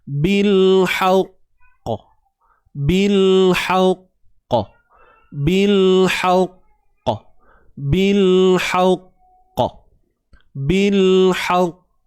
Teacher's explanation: bila kita berhenti pada kalimah al-haqq ataupun bil haqq ni, kita kena lantunkan qalqalah.